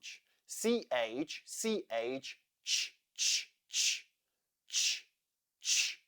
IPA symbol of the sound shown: tʃ